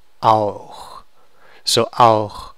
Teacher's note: au is a vowel, it's a diphthong, and au is in the back of your mouth, so this is a hard ch.